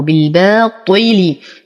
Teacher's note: بالبا ارقق الباء اعطي المد الطبيعي بعدها حقه حقه حقه بالباطل اتم كسره الطا واعطيها اقل درجات التفخيم وكسره اللام ايضا